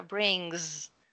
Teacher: tem que fazer um G bem forte e um S com som de Z.